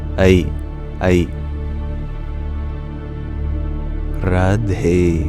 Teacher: that vowel A sound is actually a glide from A to E, very quickly.